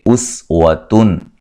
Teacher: نون تنوین کا اظہار ہے، غنہ نہیں کریں گے۔